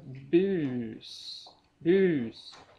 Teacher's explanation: då är uet långt och s:et förhållandevis kort